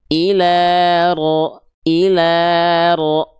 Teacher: Bukan ujung lidahnya banget bahkan tapi bagian punggung lidah ya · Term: huruf ro